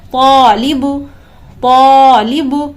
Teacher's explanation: یہاں پر آپ دیکھیں کہ الف سے پہلے حروف مستعلیہ میں سے طا ہے جو کہ پر حرف ہے، لہٰذا اس الف کو بھی ہم پر پڑھیں گے، یعنی تفخیم کریں گے